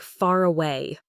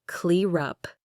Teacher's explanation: This happens when a word ends in an R sound and the very next word starts with a vowel sound. The R sound at the end of the first word actually connects right to the vowel sound at the start of the next word, making them flow together seamlessly. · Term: linking R